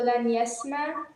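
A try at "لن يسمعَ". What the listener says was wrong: You just don't want the ayn? It's bothering, like we should just get rid of the ayn? No, dear. Yasma'a.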